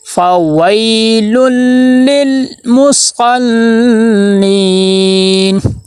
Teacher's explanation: لام کو آگے لام کے ساتھ ملائیں گے، تھوڑا سا ٹھہراؤ ہو، پھر وہ والا لام اگلے لام کے ساتھ ملے گا اور وہاں پہ دیکھنا کلکلا نہ ہو۔